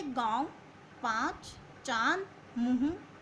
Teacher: इसका उच्चारण नाक और गला दोनों से होता है। इसे अनुनासिक कहते हैं।